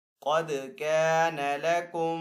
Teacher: قاف یہاں پہ حروف مستعلیہ میں سے ہے تو قاف کو یہاں پہ پر پڑھیں گے، دال حروف قلقلہ میں سے ہے تو دال کے اوپر قلقلہ کریں گے۔